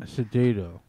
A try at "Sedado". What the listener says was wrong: No, there's a J. No D. You know, I think it's Suedo. Sedato. It's judo. Judo. Judo.